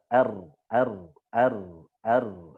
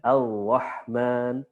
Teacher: Takrir bergetar. Ro, ya, huruf ro takrir. Satu getaran itu afsah, paling fasih. 3 getaran sampai 3 getaran itu fasih.